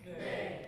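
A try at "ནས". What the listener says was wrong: Little bit lengthened, right? Ne.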